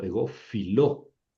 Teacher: una épsilon que choca con una o, predomina el sonido o y queda la lo, la lo.